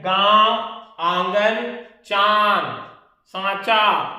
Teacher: अनुनासिक में नाक और मुंह दोनों से निकलेगा